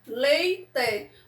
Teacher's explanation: Então aqui, ó, quando eu separo a palavrinha leite, leite, o E e o I ficaram juntos numa mesma sílaba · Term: ditongo